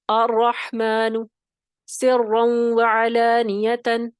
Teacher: را مشدد پر زبر ہو. را پہ تشدید بھی ہونی ہے یعنی مشدد بھی ہے اور پھر زبر بھی ہے. ٹھیک ہے، اس حالت میں بھی را موٹا پڑھا جائے گا